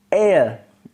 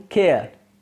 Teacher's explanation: The tongue glides from half open front to half open center. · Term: centering diphthongs